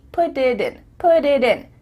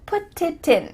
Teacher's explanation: Because instead of spending the time to let the air come out of your mouth, your tongue is just tapping the top of your mouth to make a D.